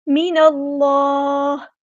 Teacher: اللہ کا لام یہاں پہ ہم پور پڑھیں گے کیونکہ اس میں جلالت تفخیم ہو رہا ہے، موٹا ادا کریں گے